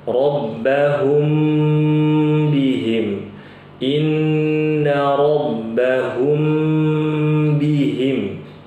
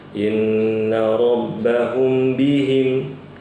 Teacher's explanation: ada mim sukun bertemu dengan ba nama hukumnya Ikhfa Syafawi Jadi kalau Ibu nanti baca ditahan dulu